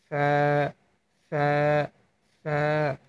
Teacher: এই দুইটা মাঝ বরাবর আপনার সামনের দুইটা দাঁত লাগিয়ে রেখে ফা হরফটি উচ্চারণ করবেন। লক্ষণীয় বিষয়, ফা হরফটি উচ্চারণের সময় আওয়াজ মানে বাতাস বের হবে,